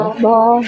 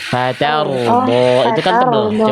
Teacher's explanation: Jadi roh sukun itu harus dibaca tebal.